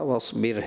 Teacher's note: را باریک ہے، آپ پر پڑھ رہے ہیں اس کو